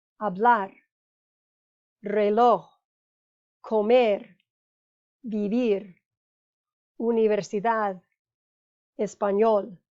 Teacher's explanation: The emphasis is on the last syllable, meaning that's the rule, so no accent mark is needed.